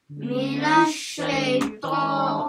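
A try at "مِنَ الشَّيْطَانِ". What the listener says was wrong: Okay, sounds like some of you guys are saying minosh, minosh. So the a sound. Mina shaito. Mina shaito.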